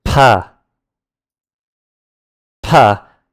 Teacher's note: The P comes out with a puff of air.